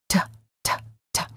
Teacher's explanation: This is what we call the fully pronounced T. The tongue touches and releases.